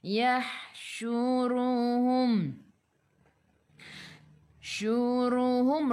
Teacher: ra baca dengan tebal, kena baca dengan tebal sebab apa? Ra tu baris depan. Yahsyuruhum mim ada sukun, jelaskan mim izhar syafawi.